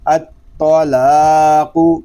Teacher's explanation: تو پر، تو مشدد میں کلکلا جماؤ کے ساتھ